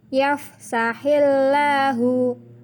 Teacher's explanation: bacaan lafadz Allah dibaca tarkik atau tipis